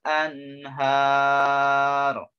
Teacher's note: nun matinya dibaca jelas karena menghadapi huruf halak, huruf tenggorokan atau huruf izhar, menghadapi ha, ya, nunnya harus dibaca jelas.